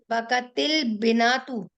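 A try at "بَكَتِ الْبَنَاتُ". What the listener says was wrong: हाँ, बनात, बनातू। बका तिल बनातू होगा, बनात पे जबर जबर आती है ना, बिनतुन होता है और बनात पे जबर आती है। तो बका, बका तिल बनातू, लड़कियां रोई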